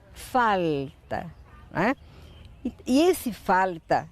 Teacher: ele foi elevando a língua para a parte posterior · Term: r caipira